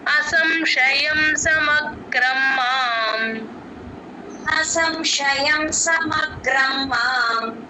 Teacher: మా కి గని జాయిన్ చేసి ఒక్క సెకండ్ ఆపితే గ కింద రకారం వినిపిస్తుంది